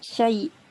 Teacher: Idgham. Masukkan ya pertama dalam ya yang kedua.